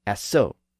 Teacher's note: Now, within modern French, the word is still spelled the same way, but it's pronounced assaut. The vowel sound has changed, and the final T at the end has become silent.